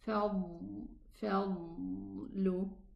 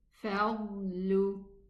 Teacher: the air is leaking to the nasals, causing this ghunna sound. The exit area should be totally closed.